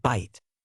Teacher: For example, the Middle English word bite, which was pronounced something like beat, became pronounced as it is today, with the long I sound shifting to a diphthong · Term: Great Vowel Shift